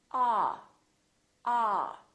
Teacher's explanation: So your jaw is all the way down and your lips are kind of oval shaped like an egg. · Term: ah sound